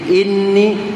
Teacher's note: Jadi inni kadar dua harakat bunyi dengungnya di situ